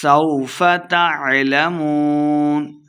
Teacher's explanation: سین پہ سیٹی کی آواز آئے گی